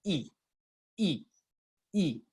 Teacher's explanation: la vocal y es una vocal cerrada la boca está casi que toda cerrada casi casi la lengua está adelante por su llama anterior y además los labios están estirados y · La lengua está adelante, por eso se llama anterior. Y además los labios están estirados. I. La lengua se mueve hacia adelante un poco. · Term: vocal I